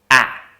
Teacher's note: So what we need to do is to move as if to say ah, but actually vocalize eh. Now that produces this ah sound that we're looking for.